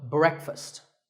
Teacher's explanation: break with a short e sound and fust with an uh sound